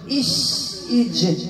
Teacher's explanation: كاين جوج الحروف يخرجوا من خرج واحد، شين والجيم